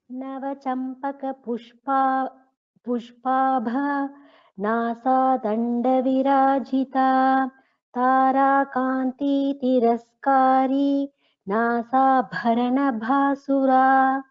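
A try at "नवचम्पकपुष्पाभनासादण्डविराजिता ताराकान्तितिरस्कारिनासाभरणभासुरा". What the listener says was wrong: So you should not take a pause anywhere here. This is one full name. There is no pause in this two verses.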